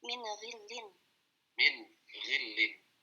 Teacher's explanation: ketemu ghain yang dia sifatnya tebal ya, tetap nunnya itu tetap dibaca tipis, tidak menjadi tebal karena nun kita melihat sifat dari nun itu sendiri yaitu tipis ketika sukun yang jelas ya. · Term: izhar halqi